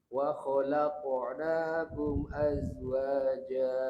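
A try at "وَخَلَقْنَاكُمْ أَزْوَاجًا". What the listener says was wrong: Kumnya jangan tersayat. Wa khalaqnakum azwaja.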